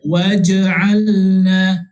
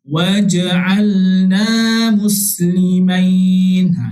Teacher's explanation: Jadi bila kita nak baca dengan huruf qalqalah ini, kita kena baca secara huruf bacaan qalqalah lah. Dia macam berdentak sikit.